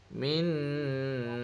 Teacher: >> Ha min ah min >> dekat min tu >> nun. Nun mati jumpa dengan syin dengung sikit. Nah dua harakat